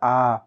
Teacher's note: इसमें विवृत में पूरा मुंह खुला रहता है